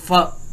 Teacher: फ, जब हम फ एंड व को प्रोनाउंस करते हैं तो bottom lip touching the upper teeth, ये आपने गौर किया होगा। फ, तो नीचे वाला जो होंठ है ना हमारा, वो अपर टीथ को टच कर रहा होता है। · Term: लैबियोडेंटल